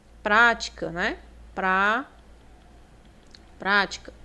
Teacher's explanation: Também proparoxítona. Veja que o pra é a antepenúltima e acentuada, né? A mais forte.